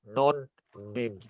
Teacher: Namun kedua huruf ini adalah menjadi induk daripada huruf dengung. Yang mana jika kita menyebut mim dan nun ini tidak akan bisa tersebut jika kita menutup hidung